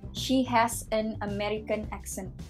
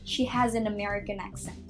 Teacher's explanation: Terus another example, kalau misalnya ada dua kata dan kata pertama ends with a consonant and continues to the second word that starts with a vowel, itu juga sering digabungin. Kalau misalnya kayak American accent itu jadi kayak satu kata gitu loh, kayak nggak ada space in between the two words.